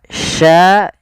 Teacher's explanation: makhrajnya adalah tengah lidah kita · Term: syin